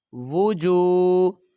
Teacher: پیش ہے اور آگے واو ساکن نہیں ہے، تو لہٰذا یہ پہلا واو جو ہے پیش والا حرف، اس کو جلدی ادا کریں گے، اور دوسرا جو پیش والا حرف ہے اس کے ساتھ واو ساکن کا اضافہ ہے اور وہ واو مدہ ہے، تو اس کو ہم کھینچ کر پڑھیں گے